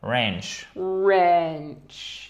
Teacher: you do not pronounce the W